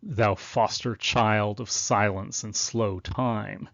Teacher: you can hear the l sound repeated in that line